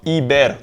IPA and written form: ˈɪ.bɛʀ (iber)